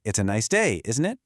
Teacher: with my voice going down, I'm not really asking. I'm just stating a fact and expecting you to agree with me. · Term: question tags